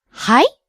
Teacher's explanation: If you use it with rising intonation, はい it turns it into a question, like excuse me?